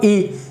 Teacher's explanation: जैसे तालव्य में ई में हमारी जो जीभ है वो यहाँ लगती है ऊपर, इसमें आगे दांत से थोड़ा पीछे वाले हिस्से में तालु पे, तो तालव्य।